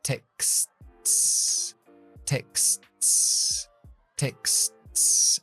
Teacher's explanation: No intente explotar la T. Simplemente sube, pega, despega y deja el aire salir para la S.